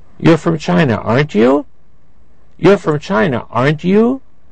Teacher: when english speakers think they know the answer to question but they aren't sure they often form tag questions with a rising intonation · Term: intonation of tag questions